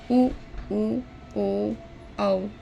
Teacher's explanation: जिन स्वरों के उच्चारण में होठ वृत्ताकार होते हैं, उन्हें वृत्ताकार या वर्तुलाकार स्वर कहते हैं